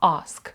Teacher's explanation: увагу Отже це є до довгий звук а слово Ask бачите перша буква там є Ей і вона читається як глибоке а